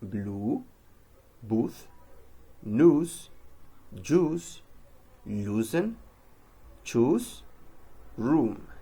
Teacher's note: pronounced with lips brought tightly forward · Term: oo sounds